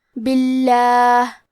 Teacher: حرف البا کے نیچے زیر ہے تو ہم لفظ الجلالہ مطلب کلمت اللہ کے لام کو پتلی آواز میں پڑھیں گے